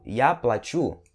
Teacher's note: No segundo caso, я плачу, sílaba tônica no U, significa eu vou pagar